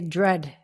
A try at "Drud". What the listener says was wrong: Yeah, it's not drut. It's more like I think you could pronounce it like DROOD.